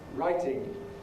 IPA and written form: ˈraɪtɪŋ (writing)